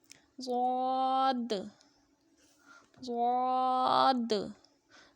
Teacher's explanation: زبان کی کروٹ جب اوپر کی داڑھوں سے لگے بائیں طرف سے آسانی سے اور دائیں طرف سے مشکل سے تو پھر ضاد ادا ہوگا.